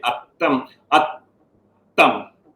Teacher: So in between the two vowels, atta, there is a silence. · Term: retroflexes